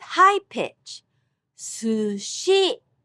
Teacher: The only difference is su is pronounced with low accent and shi with high pitch